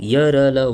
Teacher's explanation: जो अंतस्थ व्यंजन है यह स्वर और व्यंजन के बीच स्थित है और जीभ, तालु और दांत होठों को परस्पर सटाने से उच्चारित होते हैं। किंतु कभी भी पूर्ण स्पर्श नहीं होते। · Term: अर्ध स्वर